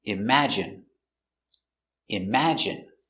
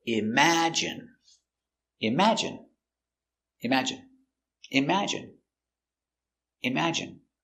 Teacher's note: Stress on the second syllable